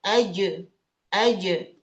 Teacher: Jim, tengah lidahnya nempel ke langit-langit. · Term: kolkolah